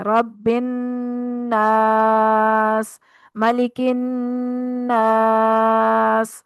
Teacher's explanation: تو یہ جو وقف کی صورت میں ہم لفظ کو کھینچتے ہیں اس کو مد عارض وقفی کہتے ہیں۔ حروف مدہ ہے اور اگلا حرف ہے موجود جس کو ہم نے ساکن کرنا ہے، تو وہاں پر اس مد کو خوب کھینچ کے ادا کریں گے، اس کو مد عارض وقفی کہتے ہیں۔